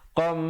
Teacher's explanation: Qam, dengungkan di situ hukumnya idgham bi gunnah, tanwin bertemu mim, jangan lupa masuk beserta dengung kadar panjang 2 harakat